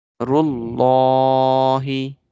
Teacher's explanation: Before Allah, the letter Ra is having Dhamma. We will make the Lam of Allah bold.